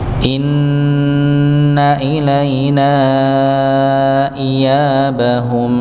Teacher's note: inaina ya ilaina nanya panjang berapa harakat empat atau lima harakat dikarenakan apa alif bertemu dengan hamzah alifnya pada ilaina hamzahnya pada iyabahum iya maka ketika alif bertemu dengan hamzah maka dipanjangkan empat atau lima lima harakat · ketika alif bertemu dengan hamzah, maka dipanjangkan 4 atau 5 harakat. Ya, dihukumi sebagai mad jaiz munfasil, nggih, atau disebut mad munfasil nggih, karena dia terpisah antara 2 kata yang berbeda.